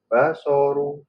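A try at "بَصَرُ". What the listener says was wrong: Nah, runya masih agak tebal dikit tadi ya.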